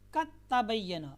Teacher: اب دال یہاں پر ختم ہو جائے گی، ٹھیک ہے، دال کا تا میں ادغام ہو گیا